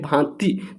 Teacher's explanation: तो देखिए भांति तो भांति में देखिए मुंह से भी प्रयोग किया जा रहा है और नाक। मुंह और नाक दोनों का प्रयोग किया जा रहा है। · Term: अनुनासिक ध्वनि